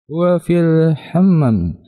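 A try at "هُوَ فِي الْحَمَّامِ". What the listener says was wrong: Huwa fil Hammam, mimnya panjang. Hammam. Ya. Huwa fil hammami. Ya, jadi mimnya itu dipanjangkan.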